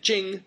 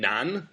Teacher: Jing first tone means capital and Nan second tone means South